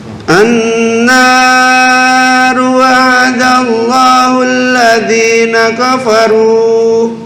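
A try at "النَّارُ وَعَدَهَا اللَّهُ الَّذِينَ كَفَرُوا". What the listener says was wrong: Nah, ini hanya 2 harokat, bukan annar kepanjangan. Annaru wa'adaha Allah. Wa'adaha Ini pendek semua ya. Wa'ada bukan wa'adaha, kepanjangan. Annaru wa'adaha Allah. Annaru wa'adaha Allah. wa'adaha. Oleh itu kebalik. Wa'ada bukan wa'ahada. Wa'adaha bukan wa'ahada.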